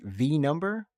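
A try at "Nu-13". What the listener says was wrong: V is it's not pronounced as V, I believe. So that is pronounced as New, actually New. Yeah, New 13.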